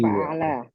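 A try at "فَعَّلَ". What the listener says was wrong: Pakai tasdid, fa'ala. Fa'ala.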